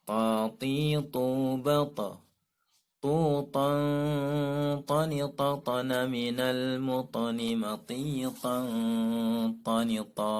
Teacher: Makhraj huruf ta adalah punggung ujung lidah mengenai pangkal gigi seri atas sambil mengenai gusinya.